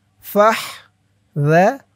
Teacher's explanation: রু একালিফটান পেশের পরে ওয়াও সাকিন।